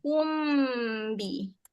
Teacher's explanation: Sebenarnya dua-dua tu sama makhraj dia. Mim dengan ba, makhraj dia sama rapat bibir. Cuma mim ada dua makhraj lah. · Dengung dia macam terus nak masuk ba.